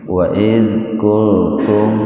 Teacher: Jadi dibaca dengan jelas di bibir mimnya itu, biar nampak jelas, tahan dua ketukan. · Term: idhar syafawi